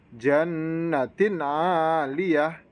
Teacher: Di situ ada tanwin yang bertemu dengan ain, maka bacanya harus jelas tanpa mendengung. Kemudian di lafadz aliyah dibaca matobi'i. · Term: idhar halki